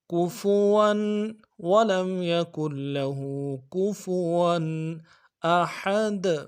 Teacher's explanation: واو کے اوپر تنوین ہے، غنہ کریں گے